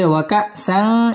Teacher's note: ওয়াকাসাং ইকফা গুন্নাহ করে পড়তে হবে